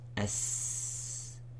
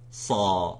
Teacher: When you say the sad, it's slightly full mouth and heavy and strong. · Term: isti'la and tafkhim